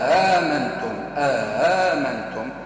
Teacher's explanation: التحقيق في الهمزة الأولى ونسهلوا الهمزة الثانية، وبعد ما نسهلوا الهمزة الثانية نجيبوا مد مد أو كألف بعدك النقطة السوداء، هذيك همزة مسهلة، بعد هذيك نجيبوا زاد مد هكذا تقرأ.